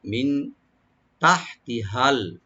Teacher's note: মিন এখানে আমরা নুন এখানে এফা করব, মিন তাহতিহাল, তাটাকে ওপেন রেখে হাটাকে একটু আমরা হামস করবো, এখানে গলার মাঝখান থেকে আনবো, তাহতি বলবো, আর হাটাকে রাইট দিয়ে লামের সাথে মিলাবো, মিন তাহতিহাল আনহার।